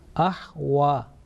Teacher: Remember, this wa is not a V sound, is a round mouth